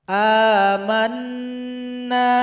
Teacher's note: Dengungkan dulu baru dipanjangkan 2 harokat.